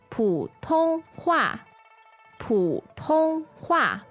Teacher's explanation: 普通话普通话 Okay, so a 3-character word. It's P-U third tone, T-O-N-G first tone, and H-U-A fourth tone.